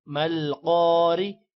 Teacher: را زیر ری. را کو باریک پڑھیں گے زیر کی وجہ سے